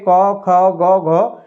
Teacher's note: तो आवाज आपकी कहां से आती है दोस्तों कंठ से आएगी